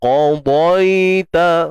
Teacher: huruf qaf tebal, huruf dha tebal, dua-dua tebal.